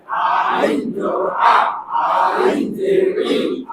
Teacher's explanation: আইন হলকের মাঝখান থেকে গলায় চিপে আদায় হবে